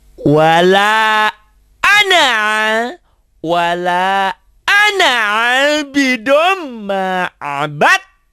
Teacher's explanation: Hanya ingin memberikan pengertian bahwa D-nya, dalnya berubah menjadi T, diidghamkan. Diidghamkan itu berarti dalnya hilang, kali nggak dibaca, konsekuensi dihilangkan dal, taknya jadi double. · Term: idgham mutajanisen